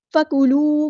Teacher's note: نہیں کرنا، حرکات کو لمبا نہیں کرتے، فَكُلُوا مِنْهَا حَيْثُ، فَكُلُوا، واؤ مد آ گیا تو ایک الف کے برابر لمبا کریں گے، مد اصلی کریں گے